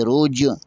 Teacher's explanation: جیم پر کلکلہ ہے یہاں پر جیم کو تھوڑا سا دبائیں گے